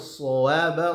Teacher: shadnya tebal, lalu kemudian ba-nya tipis